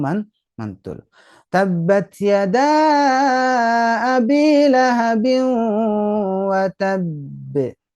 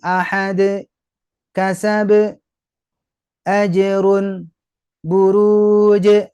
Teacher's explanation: ketika dia bertasdid atau menunjukkan dua huruf itu maka pastikan buktikan bunyinya itu menunjukkan dua huruf dengan ditahan dulu dua harakat